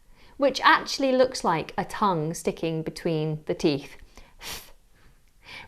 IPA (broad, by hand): θ